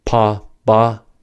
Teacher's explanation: For the pa, ba pair, the stop happens at the lips.